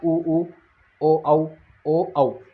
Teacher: होठों की आकृति किसके समान हो रही है? गोल हो रही है। गोल होने का मतलब वृत्त के समान हो रही है। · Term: वृत्ताकार